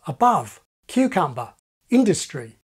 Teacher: we have in Australia a country that without reservations has the same STRUT commA distinction as RP.